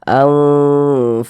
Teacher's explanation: didengungkan tuh suaranya itu kita tahan, kita panjangkan sejenak. Anfaqtum kita panjangkan sejenak.